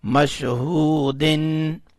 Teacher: میم شین زبر مش، ہا وو پیش ہو، مشہو، دال دو زیر دن، مشہودن. دال کے نیچے جو دو زیریں ہیں اس میں جو نون کی آواز آ رہی ہے اس کو ہم نے واضح کر کے پڑھا، اس لیے کہ آگے حمزہ آ رہا ہے تو حمزہ حروف ہلکی میں سے آتا ہے، تو اس لیے اس کو واضح کر کے پڑھا، یعنی اس کے اوپر اخفا نہیں کیا.